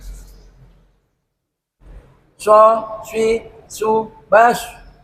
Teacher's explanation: Tapi shot ini mempunyai sifat sofir, dia ada sifat siul, ada sedikit siulnya. Dan tempatnya untuk shot yaitu ujung lidah menghadap dan mendekat di antara gigi seri atas dan bawah, sama di tempatnya sin kecil dan huruf za.